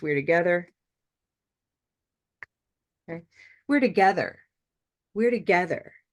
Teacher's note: start from the right side, the end, and together is our stressed word, our focus word